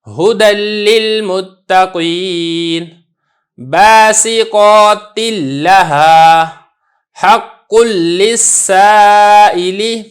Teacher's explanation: تنوین بالکل پڑھنے میں نہیں آ رہی، نون ساکن بالکل پڑھنے میں ہی نہیں آ رہا ہے، جو مدغم ہے وہ کچھ بھی باقی نہیں رہا، سب کا سب مدغم فی ہی ادا ہو رہا ہے۔